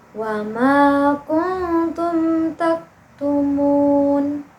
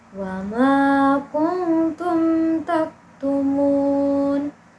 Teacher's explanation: Jadi dia itu mimnya dibaca jelas ya dan tidak ditahan, tidak didengungkan, tidak disamarkan ya. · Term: izhar syafawi